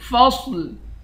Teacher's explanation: فا کو صاد کے ساتھ ملا کر صاد کو موٹا پڑھیں گے، آخر میں لام کو صاف پڑھیں گے